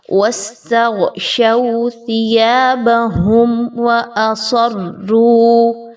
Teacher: تو اس ورڈ میں آپ نے بیسیکلی صاد اور را کو پر پڑھنا ہے، اور اس کا خاص خیال رکھنا ہے کہ تلاوت کے دوران جب آپ روانی کے ساتھ پڑھ رہے ہوتے ہیں تو یہاں پر سین کی آواز نہیں نکالنی، سین کا مخرج نہیں پڑھنا، بلکہ آپ نے صاد خوب موٹا کر کے پڑھنا ہے۔